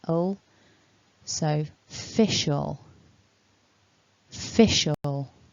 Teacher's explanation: a nice weak schwa and an al at the end there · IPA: /ə/